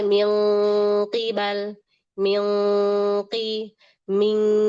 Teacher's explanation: ikhfa pada qof dan kaf karena pangkal lidahnya naik dan dia berhenti di situ